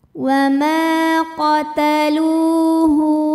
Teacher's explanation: Karena ada waw sukun yang sebelumnya berbaris dhammah. Cara bacanya dipanjangkan lamnya 2 harokat. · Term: mad tabi'i zahiri